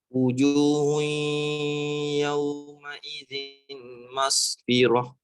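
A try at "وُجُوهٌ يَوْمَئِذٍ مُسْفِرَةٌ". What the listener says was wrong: Tak ada mas, tak ada. Mas dah meninggal.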